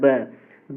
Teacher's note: इसको भी आप बोल कर ट्राई कर सकते हैं, जब ब बोलेंगे आप, ब बोलिए, आपका दोनों होठ टच हो रहा है, यानी कि ओष्ठ हो जाएगा ना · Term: ओष्ठ ध्वनि